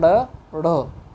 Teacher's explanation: आगे बढ़ते हैं, आगे है हमारे ये 2 जो वर्ण है दोस्तों हमारे, ये उत्क्षिप्त व्यंजन कहलाते हैं। उत्क्षिप्त व्यंजन को कहते हैं क्योंकि इसमें जिह्वा एक बार ऊपर की तरफ उठती है, फिर झटके से नीचे गिर जाती है। और इन 2 वर्णों की खास बात भी होती है दोस्तों।